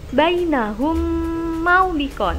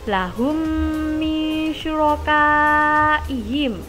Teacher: setiap mim sukun bertemu mim cara membacanya dengan memasukkan ke dalam huruf setelahnya sehingga berharokat seperti tasydid · Di sini ada huruf mim sukun bertemu mim, sehingga bacaannya digabung dan menghasilkan bacaan dengung. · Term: Idgham mislain, idgham mithlain